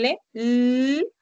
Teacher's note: Si haces el sonido de L, vas a darte cuenta que la punta de tu lengua, el ápice, se está apoyando en la zona alveolar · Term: sonidos alveolares